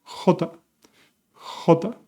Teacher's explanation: Same sound as the G from your throat, like history, but stronger.